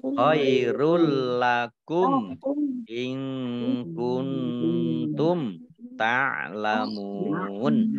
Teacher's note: Nun sukun bertemu dengan huruf kaf, bacaan ikhfa. Nun sukun bertemu dengan huruf ta, juga bacaan ikhfa. Dibaca samar-samar.